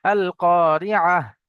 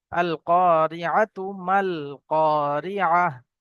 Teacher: ওয়াকফ করে দিলে অর্থাৎ দাঁড়িয়ে গেলে, ছেড়ে দিলে, শ্বাস ছাড়লে তখন ওখানে হা হয়ে যাবে।